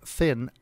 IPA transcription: θɪn